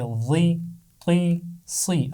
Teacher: موٹی آوازوں کو واو کے ساتھ نہیں پڑھنا، یعنی غی توئی سوئی نہیں پڑھنا، بلکہ غی تی سی.